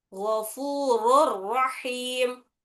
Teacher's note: वो नून की आवाज अभी रॉ में, रॉ आने की वजह से रॉ में मिल जाती वो, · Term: इदगाम बिला गुना